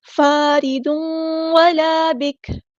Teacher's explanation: letter ہے، ضاد ہمارا ہیوی لیٹر ہے، پورا ادا کریں گے، تنوین کے بعد دیکھیں واو آیا ہے، ادغام مع الغنہ ہوگا، ادغام ناقص